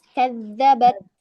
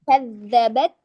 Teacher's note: Jadi at itu syiddah, te-nya itu hamas.